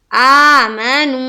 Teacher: آ کو کھینچنا ہے، میم کو نہیں کھینچنا، پھر نو کو کھینچیں گے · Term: واو مدہ